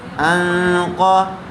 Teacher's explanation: نون ساکن کے بعد قاف آیا ہوا ہے، اس لیے غنّے کے ساتھ اخفا کر کے پڑھیں گے